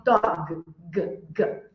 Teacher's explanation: G quando você fala o g Aí sim vai vir vibrar você tá percebendo que tem vibração nas tuas cordas vocais E aí quer dizer que o som é vozeado então toda